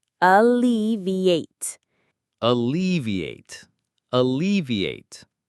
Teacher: It has 4 syllables. Listen carefully. Alleviate. Alleviate. The stress is on the second syllable, L-E. Let's say it slowly together.